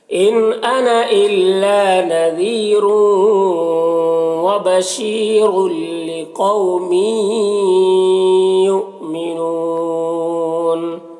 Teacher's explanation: تنوین کے بعد لام حروف یرملون میں سے، تو بغیر غنہ کے تنوین کو لام سے ملا کر پڑھیں گے، اس کو ادغام تام کہتے ہیں۔ · اور می میں بھی ادغام ناقص ہو رہا ہے. یؤمنون یہاں پر حمزہ ساکنہ ہے، واو کی شکل میں جھٹکا لگے گا. نون یہاں پر وقف کی صورت میں مد عارض وقفی ہوگا.